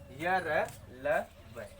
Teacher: इनका उच्चारण करते समय मुख विवर के अंदर जिह्वा का किसी भी पार्ट से या किसी भी भाग से कोई स्पर्शीकरण नहीं होता है और ये संख्या में 4 होते हैं। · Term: अंतस्थ व्यंजन